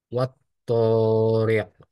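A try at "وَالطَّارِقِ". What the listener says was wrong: Dua harakat saja. Wat tariq. Nah, itu lebih dari dua harakat.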